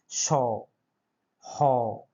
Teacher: প্রচুর শ্বাসবায়ু লাগছে এবং শীষ দেওয়ার লাগছে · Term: উষ্ম বর্ণ